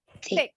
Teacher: Thick, ujung lidahnya keluar